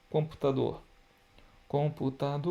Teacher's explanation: a sílaba que se prolonga é sílaba tônica dor